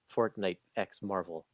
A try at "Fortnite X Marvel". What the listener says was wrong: Josh is saying the X is silent. It's just showing a team up.